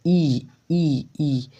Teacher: ई का उच्चारण स्थान तालू आ रहा है, तालू।